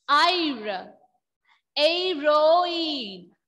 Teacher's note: I am not pronouncing the H sound here. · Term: H is silent